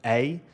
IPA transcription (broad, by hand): ɐj